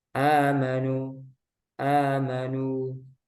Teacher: nah ini mad badal kalau di dilihat dari segi panjang dia dua harakat panjangnya untuk riwayat hafz